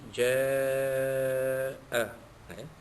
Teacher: mad wajib muttasil, wajib dibaca sepanjang pada kadar panjang 6 harakat